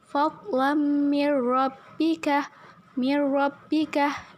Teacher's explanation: apabila nun mati atau tanwin bertemu dengan huruf huruf idgam bilagunnah maka dibacanya dengan dimasukkan namun tidak berdengung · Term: idgham bilagunnah